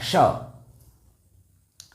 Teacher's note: वहाँ से य और यह जो श दिखाई दे रहा है, इस श का भी उच्चारण हमारा तालु से ही होता है। अपने जिह्वा को तालु के पास ले जाके इस श का उच्चारण करना